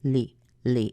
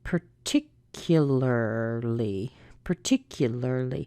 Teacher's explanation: when we put the ly on the end it's also unstressed but this time we have a little baby EE sound that's what an ly always sounds like ly ly it's not